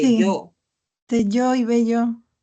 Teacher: No lo podemos tomar en cuenta porque selló, el fonema vocálico tiene un acento, ¿no?, mayor que el fonema vocálico de bello